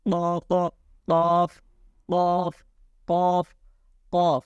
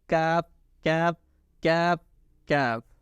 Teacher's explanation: In the pronunciation of qaaf, touch your tongue's root, soft part of the plate. But in pronunciation of kaaf, touch your tongue's root of hard part of the plate